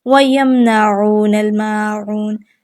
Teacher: میم کو ظاہر کر کے پڑھیں گے، غنہ کسی بھی قسم کا نہیں کیا جائے گا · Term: اظہار شفوی